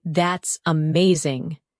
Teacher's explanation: When you say, that's amazing. Your tone rises with excitement. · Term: Intonation